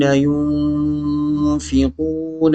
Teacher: اخفا غنہ ہوگا، نون ساکن کے بعد فا آ رہی ہے